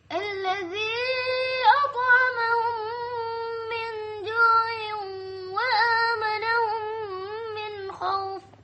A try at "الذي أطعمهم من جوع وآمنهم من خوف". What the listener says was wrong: Pendeknya khauf Yang tadi hadzal bait panjang, semua panjang. Ila fi Quraisy panjang. Hadzal bait sampai khauf min khauf.